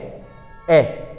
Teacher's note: तो ए में हमारा मुह आधा खुला